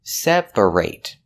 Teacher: Example, I need to separate my laundry. And the reason we pronounce it ate in the verb separate is because that syllable is stressed